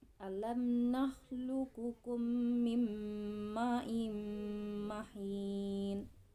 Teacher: terdapat hukum tajwid idgham mimmi karena mim mati atau mim berharakat sukun bertemu dengan huruf mim